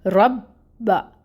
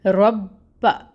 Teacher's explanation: پہلے رو کو ملانا ہے با ساکن کے ساتھ، اور پھر با کی حرکت ادا کرنی ہے ہم نے